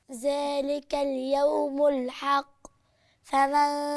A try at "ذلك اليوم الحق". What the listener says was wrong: فين القلقلة؟ ما عشان ما قلقلتيش القاف، أنا مش سامعة قاف. كلتي الألف واللام ليه؟ ذلك اليوم الحق. الحق.